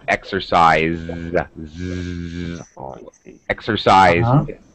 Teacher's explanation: The S here is a Z sound.